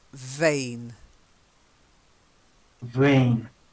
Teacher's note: happens with your mouth is your teeth go just onto your bottom lip to say V, and then you vibrate the bottom lip a bit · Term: V sound